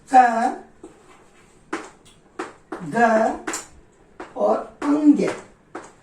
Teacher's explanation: इसी तरह हम लोग और देखते हैं, अगर मैं इनको प्राण और वायु के आधार पर अगर मैं इनको बांटने की कोशिश करूं तो क्या होगा कि पहला, तीसरा और पांचवा वर्ण यानी क, ग और अंग, ये तीनों तो हो जाएंगे अल्प प्राण, यानी जिनमें कम वायु निकले।